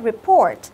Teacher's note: Nhớ cái từ này trong âm nhấn vào âm thứ hai nhá.